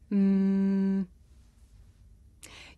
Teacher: I make this sound by closing my lips and letting the sound come through my nose I can even feel my nose vibrating you try m you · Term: consonant sound